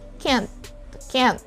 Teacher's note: probably the letter t is just very faint so you don't hear that much at the end